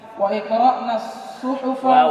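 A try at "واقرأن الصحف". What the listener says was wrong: Ya, wa qra' jangan wa'i. Wa qra'na.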